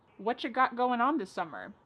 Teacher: Whatcha is what plus you. You becomes cha.